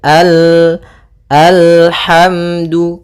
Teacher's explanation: Maka kita baca dengan al, kemudian al, hati-hati dalam lafal lam, sempurnakan makhraj daripada lam, ujung lidah naik melekat dengan langit-langit atas